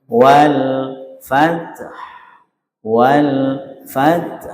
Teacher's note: huruf yang ketiga dari terakhir sedikit agak dihentakkan. Huruf yang ketiga dari terakhir no berarti fa.